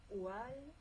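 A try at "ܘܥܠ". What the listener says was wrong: Oual, bravo.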